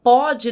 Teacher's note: pode no presente tem o som mais aberto